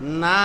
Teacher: মদের হরফের পরের হরফে থামলে জজম ধরে 3 আলিফ টেনে পড়তে হবে